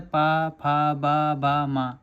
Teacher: पा का उच्चारण स्थान ओष्ठ होगा।